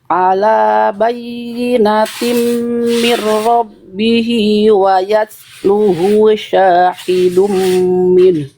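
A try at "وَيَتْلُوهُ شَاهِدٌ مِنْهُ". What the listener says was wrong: Wayat lu-nya tadi panjang pendeknya agak keliru, diulang dari wayat lu.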